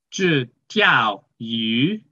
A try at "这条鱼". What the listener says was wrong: No, it's 这条鱼 It's going up, 条